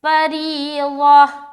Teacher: گول تا پر وقف کرنے کا طریقہ یہ ہے کہ اسے آپ ہائے ساکینہ بنا دیں گے، ہائے ساکینہ سے مراد یہ ہے کہ اس حرف کو ہا بنانا ہے اور اس کے اوپر سکون کا علامت لگائیں گے.